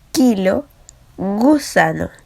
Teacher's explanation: la parte posterior de la lengua se va a unir al velo del paladar